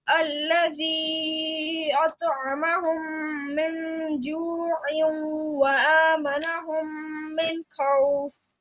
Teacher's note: you have to stretch the zi for 2 seconds because of the small mud